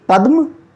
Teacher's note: पदम नहीं पद्म, द आधा है